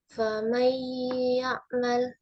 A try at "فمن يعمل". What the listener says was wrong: Baik. Lanjut.